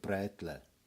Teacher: Now, this one is really weird because most people would write it like this, like Brätle, but also with an E, but it's not really pronounced that way because the Brätle is pronounced with a mix of Ö and E. · people will write it with an E, but it's a mixture between Ö and E